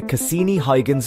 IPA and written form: kəˈsiːni ˈhɔɪɡənz (Cassini–Huygens)